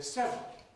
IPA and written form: ˈsevrəl (several)